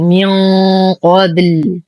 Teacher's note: موسى من قبل. نون ساكنة بعدها حرف القاف المفخمة. الحكم إخفاء حقيقي مع غنة كاملة مفخمة